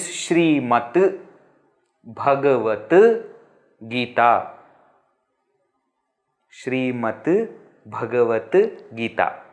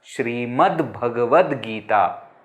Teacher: when ta is followed by ga, which is C3, then that ta also will become C3. And therefore we have 2 dakaras. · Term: hal sandhi